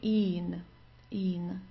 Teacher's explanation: So just a long I and then an N.